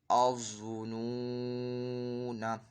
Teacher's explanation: اب یہاں پہ وہی کہ ضا حرف مستعلیہ میں سے پر پڑھا جائے گا، اور یہاں پہ واو ساکن سے پہلے پیش ہے، واو مدہ ہو رہا ہے، ایک الف 2 حرکات کے برابر اس کو کھینچ کر پڑھا جائے گا